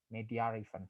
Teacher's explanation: these people use R in the middle of media and event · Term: intrusive R